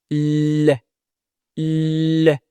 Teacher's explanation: le bout de la langue touche le haut de la bouche, juste derrière les dents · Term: le son L